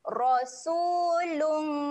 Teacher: Rasul dibaca dengan tebal Sebab Dia berbaris atas